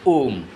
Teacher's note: उच्चारण में दीर्घ स्वर्ग से भी अधिक समय लगता है तथा लघु स्वर से तीन गुना समय लगता है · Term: प्लुत स्वर